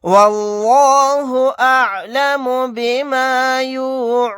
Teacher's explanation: لفظ اللہ کے لام کو موٹا پڑھیں گے کیونکہ لفظ اللہ کے لام سے پہلے زبر آ رہا ہے. یہاں پر آیت کرنے کی صورت میں نون کو ساکن بنا کر پڑھیں گے.